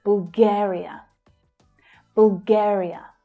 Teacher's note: The second syllable there is the stressed syllable.